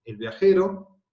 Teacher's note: el artículo no tiene acento, ¿ven? Es átono.